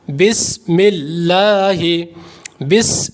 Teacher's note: کیونکہ یہ حروف صفیریہ میں سے ہے، جب سین پڑھیں گے تو سیٹی کی آواز پیدا ہوتی ہے